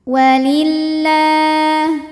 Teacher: Lam jalalah dibunyikan secara tarqik sebab huruf sebelumnya berbaris kasrah maka dibacanya tipis.